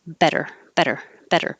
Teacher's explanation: we were practicing the flap which is a d but it's very lightly touching